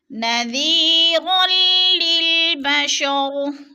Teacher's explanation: نذیر للبشر، نذیر، یا ساکن سے پہلے ذال کے نیچے زیر ہے تو یا مدہ ہو رہا ہے، یا مدہ کو ایک الف دو حرکات کے برابر ہم نے کھینچ کر پڑھنا ہے اور را کو لام کے ساتھ ملا کر ادغام کرنا ہے۔